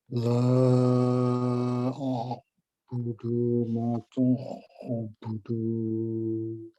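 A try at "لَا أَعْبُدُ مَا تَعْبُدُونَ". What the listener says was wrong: Budud ini pendek saja ya. La a'budu ma, langsung budu ma ta'budu.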